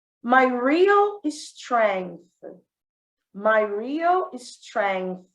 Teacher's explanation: é aquele som interdental, né? A língua entre os dentes.